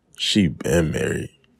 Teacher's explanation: The stress on been indicates that the marriage began in the remote past, so the phrase for a long time is unnecessary. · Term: stressed been